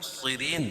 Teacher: صاد کو پور پڑھیں گے اور را باریک پڑھی جائے گی کیوں؟ را کے نیچے زیر ہے, اور وقف کی صورت میں یہ مد عارض وقفی ہوگا, اس میں طول توسط قصر تینوں جائز ہے.